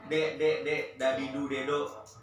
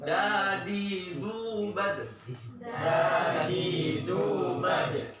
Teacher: Kalau huruf D-nya orang Indo tuh D-nya ke belakang, nggak kena gigi. Tapi kalau D-nya Arab nyentuh gigi depan. · Kalau Arab di depan, da-nya, lidahnya ke gigi atas.